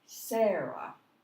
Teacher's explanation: the first part of it is said louder, longer, higher.